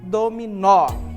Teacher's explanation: exemplo é um exemplo aqui olha só [Música] dominó certo então a gente diz que o mó é a sílaba tônica da palavra · o nó é a sílaba tônica da palavra